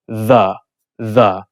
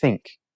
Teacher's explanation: So, “the” is hard or voiced. You hum, “the.” And then with “think,” it's a soft or unvoiced.